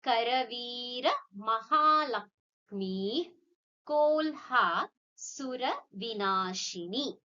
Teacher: we have a visarga which is followed by ka. So it's taking that ik sound. So we say Karavira Mahalakshmi Kolha Sura Vinashini.